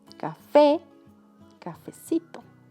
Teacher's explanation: Cuando las palabras terminan en vocal tónica, el diminutivo se forma con cito, cita, como café, la última sílaba fe es la que suena más fuerte, por eso es la sílaba tónica